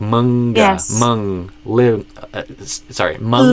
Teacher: So not the normal N in Portuguese, but specifically the N when it's before a G, because that G kind of pulls the N further back in your mouth. So you end up using the back of your tongue, which is basically what an NG sound is.